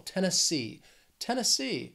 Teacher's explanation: this state has three syllables and the stress is on that third syllable that final syllable